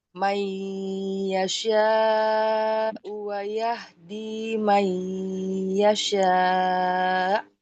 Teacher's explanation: ada nun sukun bertemu dengan huruf ya, itu idgham biguna, dilebur ke huruf ya, disertai dengung